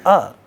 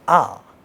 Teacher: the distinction between, a vowel sound a and aa is only in terms of the duration of these sounds. And that duration is also relative duration, which is if aa is longer than a has to be shorter than, ii if it is longer than the short one has to be shorter than that.